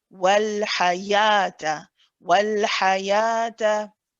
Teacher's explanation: It's a 2-count mud. It's prolonging the sound of the ya so that it's 2 counts. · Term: mud tabi'i